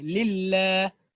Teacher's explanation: ٹھیک ہے، اور للہ میں دیکھیں دو لام ہے، ایک لام کے نیچے زیر ہے اور جو دوسرا لام ہے جس پر تشدید ہے اس کو ہم باریک کر کے پڑھیں گے